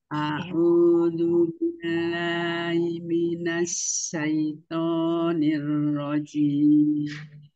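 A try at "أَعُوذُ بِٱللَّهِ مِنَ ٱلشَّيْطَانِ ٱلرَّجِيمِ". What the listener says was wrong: Tinggal Ismamul Harokatnya, buka tutup mulutnya, disempurnakan ya, A'udzu billahi minasy syaithanir rajim.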